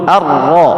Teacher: Nun mati ketemu ro melebur